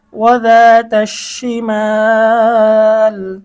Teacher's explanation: মদের হরফের পরে অক্ফ করলে মধ্যে আরজি 3 আলিফ টেনে পড়তে হয়